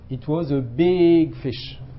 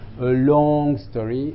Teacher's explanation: Grave, voilà, c'est ça. Comme l'utilisation d'une voix grave et d'une voyelle allongée, hein, pour parler d'objets grands